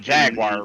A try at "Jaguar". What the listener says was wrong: You're not saying that word right. It's a Jaguar. Not Jaguar. Because you pronounce all the syllables. just say Jag. Just say Jag.